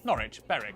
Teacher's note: w at the start of the final syllable is silent